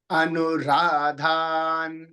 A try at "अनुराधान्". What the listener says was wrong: అను హ్రస్వం చెబుతున్నారు అనురాధాను అనురాధాను అంటున్నారండి అను దీర్ఘం చెప్పాలి అనురాధాను